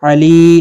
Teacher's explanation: لی یا مدہ ہے، ایک الف کے مقدار کے برابر کھینچ کر پڑھیں گے